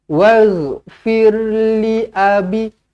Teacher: Waghfir li abi, li tak panjang, a tak panjang